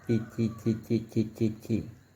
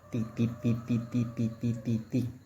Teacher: First with the tongue touching the alveolar ridge, then with the tongue tip touching the upper front teeth.